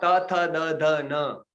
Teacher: त थ द ध न ये दंत्य से, दंत दांत से निकले तो दंत्य कहे जाएंगे